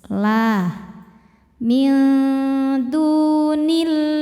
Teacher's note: Sebab sebelumnya harakatnya kasrah. Cara bacanya lam dibaca tipis. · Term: tarqiq